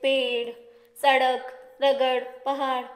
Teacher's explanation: हमारी जीभ हमारे मुख के ऊपरी हिस्से को छूकर वापस नीचे गिरती है। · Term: उत्क्षिप्त व्यंजन